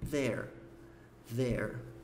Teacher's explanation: Aqui acabou juntando as duas coisas, tanto a pontinha da língua entre os dentes no começo, como também o som do R com o biquinho no final.